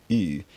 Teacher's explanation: It's remotely possible that it was something like rounded U in Proto-Germanic, so the tongue is front and high but the lips are rounded